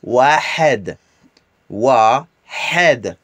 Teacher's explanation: le H, qui est le H expiré dans la gorge, mais d'une façon aiguë.